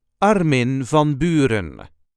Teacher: there is a slight emphasis on the first syllable of the first name and also on the first syllable of the last name